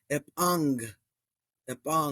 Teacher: you have that double gamma which we know that that turns the first uh gamma to like an n Sound right so we get Ang and even erasmian Falls that follows